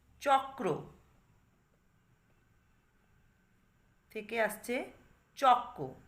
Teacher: কয় রফলা, তার মানে আগে ক আছে পরে রফলা রয়েছে, তাহলে পূর্বের ক কই থেকে গেছে, কিন্তু পরবর্তী র ফলাটা পূর্ববর্তী কয়ের প্রভাবে প্রভাবিত হয়ে পরিবর্তিত হয়ে ক হয়েছে · তাহলে এই শব্দটাতে দেখতে পাচ্ছ কয় রফলা ছিল, সেই কয় রফলা রফলাটা হয়ে গেছে প্রথম কয়ের প্রভাবে ক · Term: সমীভবন